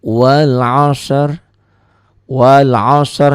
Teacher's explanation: kalau dihentikan ini rinya jadi tidak berbunyi jadi wal asr wal asr jadi enggak Wal Asri lagi ya